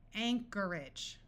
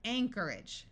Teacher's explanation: Notice that the OR takes on a muffled sound, and AGE at the end of a word, rather than having a clear long A sound and sounding like age, tends to take on an edge sound.